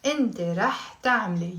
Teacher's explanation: So instead of saying تعملي, which sounds wrong, we say تعملي. We're dropping the dhamma, the O sound.